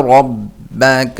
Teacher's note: را موٹا کریں گے، با کو جمع کر پڑھیں گے